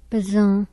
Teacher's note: High back centralized, nasalized rounded